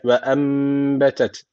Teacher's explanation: cezimli nundan sonra b geldiği için iklap tecviti var. Bir elif tutuyoruz.